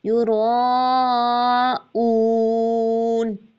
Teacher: زینہ، ہم یراؤون، یہاں پر یہ مد متصل ہے، حمزہ اسی کلیمے میں ہے، اس کو 4 to 5 کاؤنٹس کھینچنا ہی کھینچنا ہے، یہ مد لازم بھی ہوتی ہے، ٹھیک ہے؟ یراؤون، حمزہ کی آواز واضح اور اس میں بلندی ہوتی ہے، جہر کی صفت لگتی ہے، یراؤون، اس کو اون ایسے نہیں پڑھنا، بلند آواز سے پڑھنا، اون، ٹھیک ہے؟